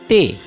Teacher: زبان کے نوک سے اوپری دانت پر تنفسی بہاؤ یعنی سانس کی ہوا کو روکا جاتا ہے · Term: دندانی